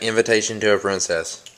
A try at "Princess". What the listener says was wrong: You said princess like you had a lisp. Princess.